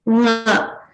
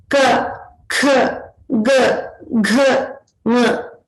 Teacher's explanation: if you observe, they all arise from the kanthasthana or the throat.